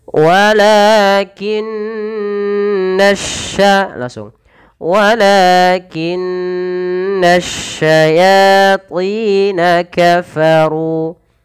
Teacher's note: Walakinna asyayatin. Tahankan suara nun karena dia ada bacaan gunnah pada lafal nun berharakat tasydid